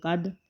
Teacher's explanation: کاف دال زبر قد، دال ساکن ہے اس پر بھی قلقلہ ہوگا